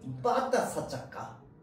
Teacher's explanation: 성대의 근육을 긴장시켜서 내는 단단한 소리입니다. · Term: 된소리